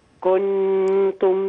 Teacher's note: كنتم بقت نون مشددة، لكن هذه النون مخفاة.